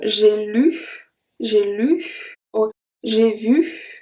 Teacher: sometimes it seems like we whisper at the end of U and OO.